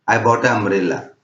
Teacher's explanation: अगर हम एक वॉवेल साउंड के बाद दूसरे वॉवेल साउंड का उच्चार करते हैं तो वो क्लियर सुनाई नहीं देते हैं, आपस में मर्ज हो जाते हैं। जैसे मुझे कहना है अ अम्ब्रेला, तो मैं कहूंगा आई बॉट अ अम्ब्रेला, तो इसमें अ बिल्कुल नहीं सुनाई देता है, इसलिए हम लोग एन का उपयोग करते हैं।